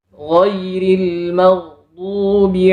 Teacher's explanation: makhraj huruf gainin berada di ujung tenggorokan bukan di lidah kalau kita menggunakan lidah maka suaranya seperti ini giril giril nah